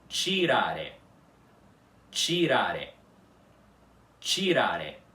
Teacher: a primeira sílaba dessa palavra é ti. Quer dizer, ti sem aspiração.